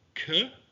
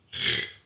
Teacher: Kaf is pronounced with the dagesh, k, or without the dagesh, ch, that grinding sound at the roof of the mouth